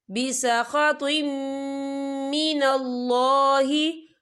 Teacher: کمن باء بسخط من اللہ، یہ دیکھیں بسخط، طوا کے نیچے تنوین ہے، تنوین کے بعد جو ہے میم آ رہا ہے اور میم جو ہے حروف یرملون میں سے ہے، تو یہاں پر ادغام ہوگا، تو ہم اسے غنّے کے ساتھ پڑھیں گے